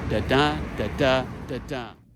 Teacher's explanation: a dominant iambic rhythm. Weak, strong, weak, strong, weak, strong.